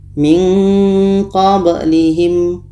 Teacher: Kita baca samar. Ketika sebut huruf nun kita sudah merasakan huruf qa. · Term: ikhfa hakiki